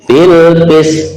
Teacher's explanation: kita tunaikan sifat qalqalah pada to ya